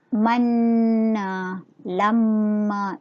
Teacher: Nun syaddah ataupun mim syaddah. Kedua-duanya baca dengan dengung, dengan kadar 2 harakat.